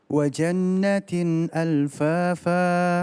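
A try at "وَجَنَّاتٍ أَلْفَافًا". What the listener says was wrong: Kurang panjang nunnya. Natin. Iya, ingat kita sudah belajar mim dan nun yang bertasydid, namanya gunnah musyaddadah atau gunnah lazimah.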